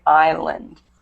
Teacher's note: S in island is silent. So we just say island. We don't pronounce the S.